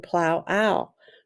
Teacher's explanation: the OW changes from the long sound of O to the ow sound